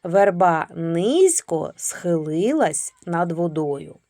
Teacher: Слово низько, звук зь, вимовляємо м'яко, вставляємо м'який знак.